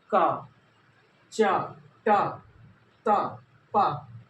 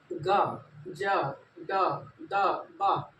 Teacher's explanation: जब वायु कम निकले तो ये होता है हमारा अल्प प्राण